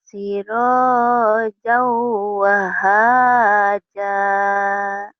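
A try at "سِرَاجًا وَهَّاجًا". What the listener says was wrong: Kan ada tasjidnya. Sirojau. Wah. Haja.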